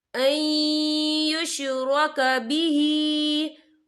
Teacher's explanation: नून साकिन के बाद जो है या आ रहा है और या जो है रूफ़ यरमलून में से है तो यहाँ पर इदगाम होगा। तो हम इसे थोड़ा सा गुन्ने के साथ पढ़ेंगे।